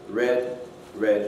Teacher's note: you'll get slight lip rounding with english r and it's different from the trumpet shaped lip branding we mentioned